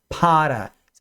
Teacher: o p em inglês ele é um pouco mais explosivo então ele sopra ar para fora